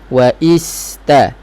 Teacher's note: Kemudian sin ada sifat safir, saya sebut tadi, bunyi macam ular, bunyi kuat. Kena jelas.